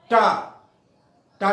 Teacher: जब टा कहेंगे तो दांत और तालू के बीच का जो स्थान है ऊपर का, वो मूर्धा होती है। तो टा जब कहेंगे, टा टा में मूर्धा में जबान का अग्रभाग छू जाएगा।